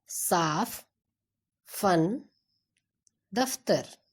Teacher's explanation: फ बोलते समय ऊपर के दांत नीचे के होंठ को छूते हैं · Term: नुक्ता